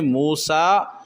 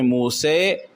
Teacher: مثلا موسیٰ کو ایک قرأت میں موسیٰ، ایک میں موسے اور ایک میں موسے، یعنی امالہ اور ایک میں اس کو ظاہر کرنا مد کے ساتھ پڑھنا، موسیٰ پڑھنا مد کے ساتھ اور موسے یہ امالہ کہلاتا ہے